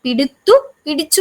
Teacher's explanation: താലവ്യ സ്വരങ്ങൾക്ക് ശേഷം വരുന്ന തകാരത്തിന് സവർണ്ണനം സംഭവിച്ച് ചകാരമായി തീരുന്നു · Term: താലവ്യാദേശം